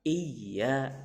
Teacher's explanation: Asal ada pantulannya itu. Artinya karena ya-nya bertasdid di sini artinya cara membacanya itu dipantulkan.